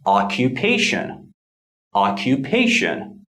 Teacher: the short vertical Mark below the line shows the secondary stress so the primary stress falls on the third syllable the secondary stress falls on the first syllable